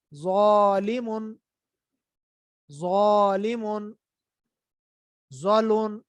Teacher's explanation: ज़ो की आवाज मोटी करके पढ़नी है